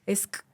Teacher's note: O sea, esa SK tienes que sacar primero, o sea, los dientes los juntas, sale el aire por los dientes y luego pasas a un sonido que es velar, o sea, que es hasta atrás.